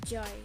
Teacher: It starts out as a d and then the tongue moves into the usual position for j.